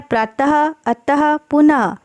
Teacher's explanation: जैसे कि शब्द बनते हैं प्रातः, अतः, पुनः। यानी कि इन वर्णों का उच्चारण करते समय हमारे मुंह से ह का उच्चारण होता है। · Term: विसर्ग